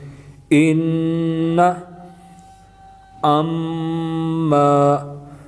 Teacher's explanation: نون مشدد اور میم مشدد میں ہمیشہ غنہ ہوگا، اور غنہ کا معنی ناک میں آواز لے جانا